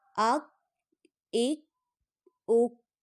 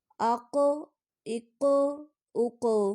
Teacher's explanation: باریک کاف کو پڑھتے ہوئے آواز واپس کی جانب نہیں لوٹے گی اور پر قاف کو پڑھتے ہوئے آواز واپس کی جانب لوٹے گی۔ حمزہ کاف زبر اک، حمزہ کاف زیر اک، حمزہ کاف پیش اک، اک اک اک۔